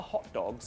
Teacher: I still think the T gets kind of dropped with the British hot dog. It's a glottal stop.